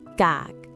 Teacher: It ends with k, which is a stop final, so the tone becomes low.